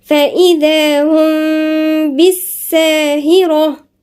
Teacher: الذال هنا من الحروف اللثوية